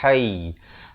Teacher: Ha di pertengahan kerongkong bertemu ya, bunyinya lembut saja.